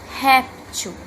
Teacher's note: observe que falamos a primeira sílaba certo com mais intensidade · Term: sílaba tônica